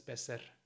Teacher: Also das vokalische R wird meistens weggelassen.